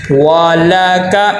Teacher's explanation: واو کے اوپر زبر ہے اور واو پہ ہونٹ گول ہو، والک، دونوں تینوں حرفوں کے اوپر، واو کے اوپر بھی، لام کے اوپر بھی اور کاف کے اوپر بھی زبر ہے، حرکات غیر مدہ میں سے ہے، حرکات غیر مدہ کو لمبا نہیں کرنا۔